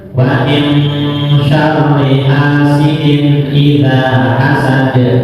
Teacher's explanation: atau di hasad dalnya kol-kolan kubro